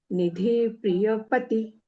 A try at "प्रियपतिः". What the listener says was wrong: प्रियहास लांबतोय तुमचा तो असच म्हणायला पाहिजे रस्वच पाहिजे